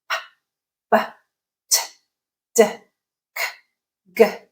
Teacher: In all those sounds, the mechanism of producing, the manner of producing those sounds is the same. We are blocking airflow and then holding it, building pressure, and then letting it go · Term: stop sounds